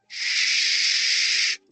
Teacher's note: la sh es lo que llamamos fricativa. Podemos aguantar ese sonido tiempo que queramos. Sh. La otra no es una explosión.